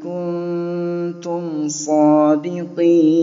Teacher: Kemudian ada mim sukun bertemu dengan huruf sad. Mimnya dibaca jelas, tidak didengungkan.